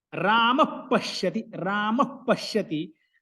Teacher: Visargaha, the whole visarga we pronounce. Whereas when they are followed by pa and pha, that visarga is pronounced like half visarga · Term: upadmaniya